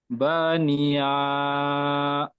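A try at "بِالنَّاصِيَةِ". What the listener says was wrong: বানিয়া বলে টান দিচ্ছেন, ইয়া হাজ যাবার ইয়া, টান হবে না, ইয়া হাজ যাবার ইয়া, ইয়াটি হার সাথে যুক্ত হলে টান হয় না, হার উপর সাকিন, গোল তা আয়াত করবার জন্য হাজ সাকিন ধরে পড়তে হবে, গোল তায়ের উপর থামতে হলে সেটি হাজ সাকিন করে পড়তে হয়।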